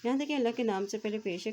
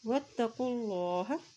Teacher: اللہ کے نام سے پہلے پیش ہے تو اللہ کا نام بھی موٹا ادا کیا جائے گا